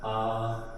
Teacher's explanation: आप केवल आ बोलेंगे तो वह जीभ के बीचों बीच हिस्सा से ही निकल के आएगा। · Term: मध्य स्वर